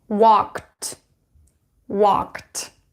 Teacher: When you add ending ed here, so walk, so k is voiceless or unvoiced. That is why you would pronounce it with an unvoiced consonant, which is t